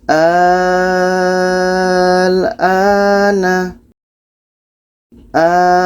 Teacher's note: a ini kita panjangkan 6 harkat baru masuk ke a-nya. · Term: mat lazim kilmi mukhaffaf